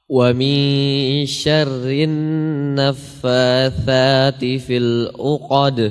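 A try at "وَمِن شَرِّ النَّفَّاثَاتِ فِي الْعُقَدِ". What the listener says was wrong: Huruf ainnya au, au. Au ya, jelaskan ainnya.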